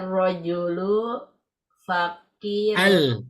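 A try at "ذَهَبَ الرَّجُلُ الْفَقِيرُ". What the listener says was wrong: Alnya dibaca. Zahaba. Ar. Ru. Fakiru. Udah ada al.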